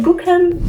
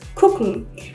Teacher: the G is actually pronounced like a K in this case